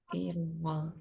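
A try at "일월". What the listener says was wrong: Irwol. Realnya masuk ke wol. Oke, Irwol.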